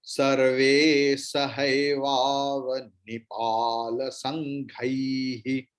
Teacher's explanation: When Visarga at the end, Visarga's pronunciation will be like Ha.